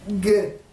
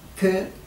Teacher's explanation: ça s'appelle une gutturale sonore, et quand on dit que, c'est la même chose, mais sourde